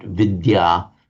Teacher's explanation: the d and the y pronounced separately in Sanskrit